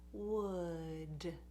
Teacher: the D at the end, you take your tongue and you touch the tooth ridge.